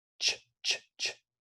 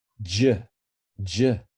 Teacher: Add your vocal cords to ch, and it becomes j, j, which we represent often with the letter J. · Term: vocalized form of ch